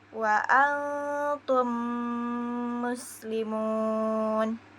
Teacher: Apabila mim sukun bertemu dengan huruf mim yang berharakat, maka cara membacanya didengungkan. Makhraj huruf mim jelas dan mengalun sepanjang kurang lebih 2 sampai 3 harakat. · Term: idgham mimi